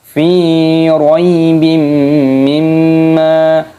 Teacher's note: kasrah tanwin bertemu dengan huruf mim idgham bi gunnah dimasukkan dan disertai berdengung. Juga di sini ada hukum mim tasdid, hukumnya gunnah dibaca berdengung.